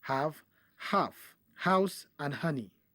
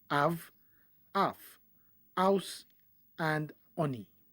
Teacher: H is a sound not found in the phonetic repertoire of the Yoruba language